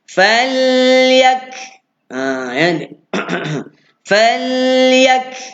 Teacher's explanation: Fal, ya baris atas, ya buka mulut, ya, kaf mati ada tanda, jelaskan bunyi kafnya, jelaskan bunyi huruf kaf, iaitu percikan angin daripada dalam mulut kita